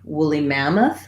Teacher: the main stress in the overall phrase is going to be on the mam syllable that has the ah vowel